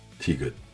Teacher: le son de base, entre de et te, léger, sans souffle, neutre.